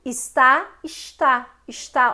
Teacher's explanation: Olha como é que o carioca fala. Ele palataliza o S. O S não é palatal aqui, mas ele se torna, né, com um fonema palatal. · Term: palatalização